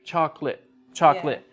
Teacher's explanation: we don't use all of the syllables with chocolate